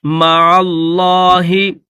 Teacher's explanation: وَلَا تَجْعَلُوا، جیم کو ظاہر کر کے پڑھیں گے، تَجْعَلُوا مَعَ اللَّهِ، یہ جو عین ہے اس عین کو لفظ اللہ کے ساتھ ملائیں گے اور لفظ اللہ کو موٹا کر کے پڑھیں گے